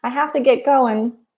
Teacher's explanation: So verbally, we drop the G a lot.